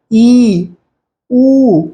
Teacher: देखेंगे तो आपको पता चलेगा कि इनमें लगभग क्लोज रहता है सबसे कम खुला हुआ मुंह बड़ी ई और बड़ा उ में रहता है